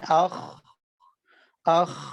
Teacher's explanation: آواز نرمی سے ٹھہر رہی ہے اور جاری رہتی ہے